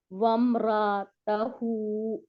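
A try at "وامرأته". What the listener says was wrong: आतु। वम रा आ तू, अलग अलग कर दे, इसको कोई फर्क नहीं पड़ेगा हम, ठीक है, पहले अलग करें। आ को नहीं खींचना, आ को खींचना नहीं आतु, आतु, तो आ को खींचना नहीं है, उसके ऊपर आगे जज्म वाली वाव लगा रहे हैं आप।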